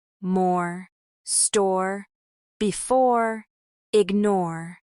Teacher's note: We can also train the OR sound in words like more, store, before, and ignore. This is a rounded vowel with the R fully pronounced.